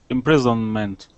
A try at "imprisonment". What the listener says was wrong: Okay, imprisonment. That would not be imprison with an S. That is going to be a Z sound. Imprisonment.